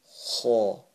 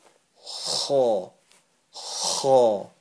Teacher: It originates from the top of your throat. Like when you wake up in the morning and you gargle some water.